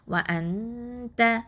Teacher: நூன் சாக்கினாக்கு அடுத்ததான் த வந்திருக்குது. அப்போது இங்கே என்ன சட்டம்? இஹ்ஃபா பண்ணணும். ஓகே, மறைச்சு ஒன்றா செஞ்சு ஓதணும்